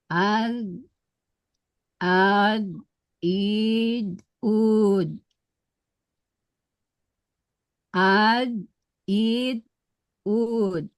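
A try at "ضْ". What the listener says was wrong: Tambah tebalnya. Al, il, ub. terasa tepi lidahnya kena geraham, terasa? nah, tapi mulut ini ya karena sifatnya itbak dia seakan-akan kayak penuh gitu ya. Itu yang menambah ketebalannya. Pangkal lidah naik.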